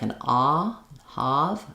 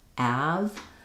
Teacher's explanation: So that's for the a vowel, the front of my tongue is down and open and the back of my tongue is lifted. Be careful not to let the tongue be down all the way.